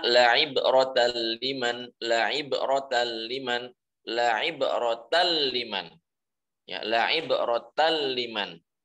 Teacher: Yang pertama la'ibratal liman ya, la'ibratal liman, bukan la'ibratal, bukan seperti itu. Nunnya sudah, nunnya hilang, karena sudah lebur kepada huruf lam. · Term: idgham bi ghairi gunnah